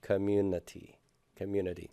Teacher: The stress is on the U, so that's going to be fully pronounced. And then I would say that there's a secondary stress there on community.